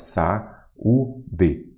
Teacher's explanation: Você tem duas vogais e elas ficam em sílabas diferentes. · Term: hiato